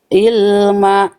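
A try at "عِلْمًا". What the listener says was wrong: Tekan dulu. Ilma. Itu hamzah. Ilma. Nah, itu kan masih i. Masih h afwan. Masih ilma. Nah, itu tadi masih ilma.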